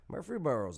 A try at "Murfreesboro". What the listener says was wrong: everyone leaves out the other r